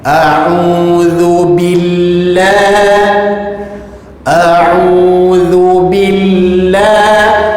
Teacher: Lam bagi kalimah Allah, bila mana sebelumnya ada huruf baris bawah, maka lam ini ditekan dengan bunyi yang nipis.